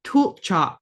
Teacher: Remember that Q's back of the throat and that first L is glottalized.